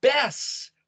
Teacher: the ashkenazi jews will call it bess